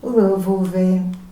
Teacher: Гласната о ни помага да чуем ясно звучен съгласен В. Тъй че в средата на думата имаме звучен съгласен в.